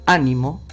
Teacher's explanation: estás diciendo que la sílaba tónica es la antepenúltima. La palabra ánimo es esdrújula.